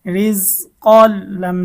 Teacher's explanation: তানবিনের পরে বেলাগুন্নার হরফ লাম এসেছে গুন্না ছাড়া মিলিয়ে পড়তে হবে